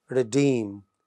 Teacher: the word redeem it is stressed on the second syllable